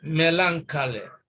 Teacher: the stress is placed on the first syllable